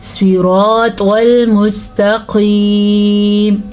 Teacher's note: یہ قاف میں نے موٹا پڑھا ہے اور یا مدہ کو کھینچ کے پڑھا ہے